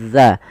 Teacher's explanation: ujung lidah nempel dengan gigi seri atas kita